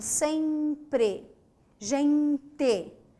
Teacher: E e N, serão representados por um único som, que é esse E nasal